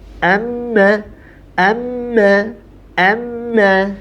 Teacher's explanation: dengan mim bertasydid Amma Amma Amma jadi ada yang tertahan gitu ada yang menahan pada bagian rongga hidungnya · Karena memang suaranya sebagian dikeluarkan dari rongga hidung. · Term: ghunnah